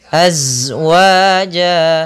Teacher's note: Huruf za itu suaranya mengalir dan akan tetapi nafasnya tertahan